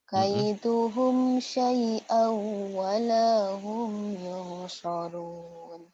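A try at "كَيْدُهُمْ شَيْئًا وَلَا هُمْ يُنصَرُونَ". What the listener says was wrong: Tinggal shinnya aja nih digedein. Yauma la yughni anhum kaiduhum syai'a. Kaiduhum syai'an walahum yunsarun.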